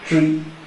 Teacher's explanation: In the pronunciation contribute, the stress is on the second syllable.